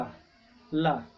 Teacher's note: ला बोलो तो जीभ के दोनों बगल से हवा, हल्की हवा निकलती है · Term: पार्श्विक व्यंजन